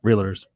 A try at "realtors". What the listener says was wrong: See, he puts the L before the A. Puts the L before the A every time.